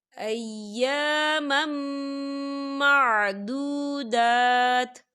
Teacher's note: یہاں دیکھیں آپ کو چھوٹی سی توئی نظر آ رہی ہے، تو یہ وقف مطلق کی علامت ہے، تو یہاں پر ٹھہرنا بہتر ہے۔ وقف کی صورت میں تا جو ہے وہ ساکن ہو جائے گا